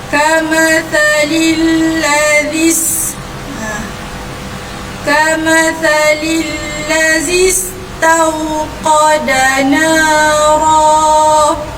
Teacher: Jadi terus saja huruf zal ni terus masuk ke dalam huruf sin. Jadi baca dia kamathalil ladzis. · hamzah wasal di sini tidak dibunyikan